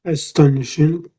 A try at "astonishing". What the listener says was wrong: yeah, you've got it. Yeah, yeah, you've got it. Yeah, very good.